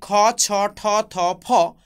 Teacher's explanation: সবগুলি ধ্বনি মহাপ্রাণ ধ্বনি এবং অঘোষ ধ্বনি